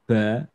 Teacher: Orang Jawa itu biasa di jim, dal, dan ba biasanya dia dibaca dengan hams